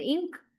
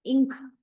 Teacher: When you pronounce the word ink, nga. Letter N is pronounced as ng, ink.